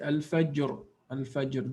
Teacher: There is a qalqala on jim, and then ra is strong or full mouthed.